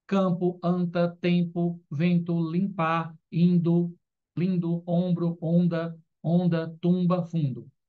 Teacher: Nesses casos, o M ou N não é articulado como consoante, mas indica a nasalização da vogal precedente. Quando o M ou N, ao lado da vogal, tiver som de tio, dígrafo vocálico. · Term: Dígrafos vocálicos